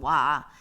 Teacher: 처음엔 입술이 오 동그랗게 모여 있다가 와 마지막에 퍼지는 모양을 보이고 있죠. 이렇게 입술 모양이 오와 바뀐다. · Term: 이중모음